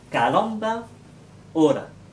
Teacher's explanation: On n'utilise pas la gorge en espagnol pour prononcer le R. Ce R doit se prononcer dans la bouche, mais d'une manière très douce, un peu comme un L, mais moins prononcé.